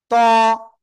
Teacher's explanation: দুই দাঁতের গোড়ায় লাগান লাগিয়ে উচ্চারণ করতে হবে